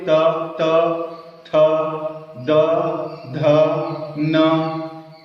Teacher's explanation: सभी वर्णों को बोलेंगे, जिह्वा हमेशा दांत में ही टकराएगी